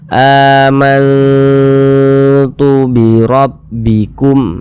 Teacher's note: kita samarkan kemudian kita dengungkan jadi suaranya itu kita tahan kita panjangkan sepanjang dua harakat